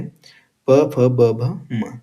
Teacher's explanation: फिर है पांचवा प वर्ग जिसका उच्चारण स्थान होता है ओष्ठ